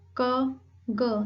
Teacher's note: आपका जो back part है टंग का वो सॉफ्ट पैलेट को टच करता है, हल्का सा टच करता है उसको and you produce sound like क ग। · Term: वेलर